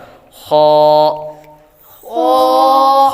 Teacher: حروف حلقیہ میں سے ہے اور حلقے اوپر والے حصے سے ادا ہوتا ہے